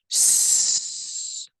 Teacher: S, still with your fingers against your throat. You should feel and hear a hissing noise in your mouth, but you don't feel anything against your fingers.